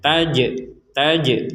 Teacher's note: samar Jan [Musik] tajri Nah di sini ada Jim sukun nah Jim sukun ini kita ee pentalkan atau dipantulkan ketika membacanya